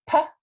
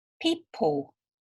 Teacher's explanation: If you put your hand in front of your mouth and go P, You can feel the breath on your hand. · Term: P sound